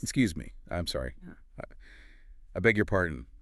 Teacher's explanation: I beg your pardon. Always with rising intonation to signal you need repetition, not that you're actually apologizing for something.